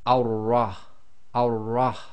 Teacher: So we read the Hamzatul Wasl as if it's got a fatha, but because we've now got the shadda on top of the ra, the shadda has to join to a sound before it. So we're going to effectively completely skip the lam. So we're going to join the fatha, which is going to be on top of the wasla, and join that to the ra.